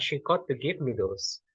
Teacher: Jadi intonation yang mulai berubah itu ada di those saja, sedangkan yang sebelum-sebelumnya itu tidak mengalami perubahan intonations. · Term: head